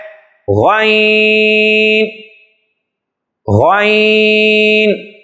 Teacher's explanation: غین کا جو مخرج ہے وہ ابتدائی حلق، یعنی حلق کے درمیانی حصے سے اوپر کی طرف، منہ کی طرف آئیں گے تو جہاں سے ہمارا حلق سٹارٹ ہوتا ہے وہاں ابتدا جہاں سے ہوتی ہے وہاں اس کا مخرج ہے غین۔